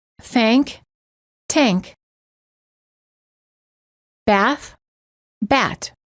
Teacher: pronounce the voiceless th as a t and the following words end up sounding the same